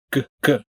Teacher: way to a hard G sound good good which is generally made by bringing your tongue all the way up in the back and closing off the flow of air